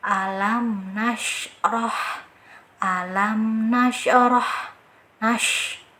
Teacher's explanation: Sedangkan untuk shin dia tidak menempel. Dan ketika pengucapan huruf shin ini harus adanya suara atau angin atau udara yang tersebar pada mulut